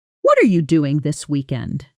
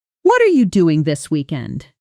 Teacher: Notice how what are you compresses down into something closer to wa cha with the individual words almost disappearing into one smooth unit.